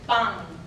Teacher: Typically, this is an alveolar sound. However, when it's velarized, it becomes a nasal velar sound.